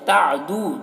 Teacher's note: دو میں واو مدہ ہے، اسے ایک الف کے برابر کھینچیں گے